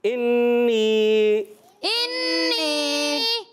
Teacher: اور نون مشدد ایک الف کا غنہ کریں گے